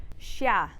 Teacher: Okay, so it is different from the one above in that it's a bit of a longer sh sound. So the letter is called xia.